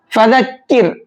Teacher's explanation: فَذَكِّرْ إِن نَفَعَتِ الذِّكْرَىٰ، فَذَكِّرْ، اس را کو باریک کریں گے کیونکہ را ساکن سے پہلے یہاں زیر ہے، اور را ساکن سے پہلے زیر ہوتا ہے تو را کو باریک کر کے پڑھتے ہیں